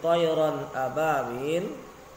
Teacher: ronnya itu tidak boleh dibaca panjang. Kenapa? Karena di situ ada tanda tanwin bertemu dengan huruf alif, itu adalah merupakan huruf hukum daripada izhar.